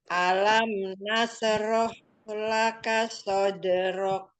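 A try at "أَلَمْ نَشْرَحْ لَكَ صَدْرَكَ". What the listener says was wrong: Nashroh. Pakai shin. Nashroh. Yang hati-hati di shin.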